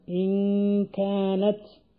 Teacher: നാവ് ഊനിൽ നിന്ന് എടുത്ത് നാവ് എവിടെയും തട്ടിക്കാതെ തരിമൂക്കൊണ്ട് മാത്രമാണ് ഈ സമയത്ത് നൂൻ ഉച്ചരിക്കുന്നത് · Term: ഇഖ്ഫാ ചെയ്യപ്പെട്ട നൂൻ